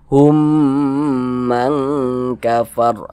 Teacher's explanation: Wa minhum, humnya kita tahan, kita panjangkan sejenak. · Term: idgham mimi